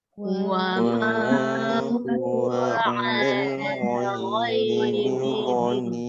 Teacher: Begitu saya ingat kalau sekiranya bacaan alif lam qamariyah tu, kalimah yang ada dalam qamariyah tu berada di tengah-tengah, kita baca sambung, maka hamzah wasal tu ataupun yang alif tu tidak dibaca. Terus kepada huruf lam yang mati.